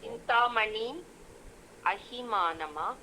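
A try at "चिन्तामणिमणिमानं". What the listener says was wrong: அணி சிந்தாமணி மணிமானம். மானம் மானம் மஹி இருக்கு இல்லையா, அந்த ஹீக்கு பதிலாக 3 சுழி நீ போட்டுக்கோ.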